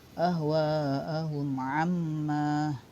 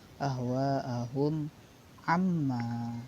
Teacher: kalau izhar syafawi ini dibaca, mimnya dibaca jelas, tidak didengungkan.